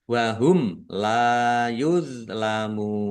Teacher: Mim sukun bertemu dengan huruf lam. Bacaan izhar syafawi dibaca jelas.